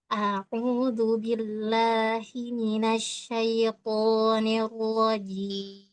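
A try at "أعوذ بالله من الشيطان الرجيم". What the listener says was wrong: Coba, hi-nya dijelaskan tadi. A'udzu billahi. Hi.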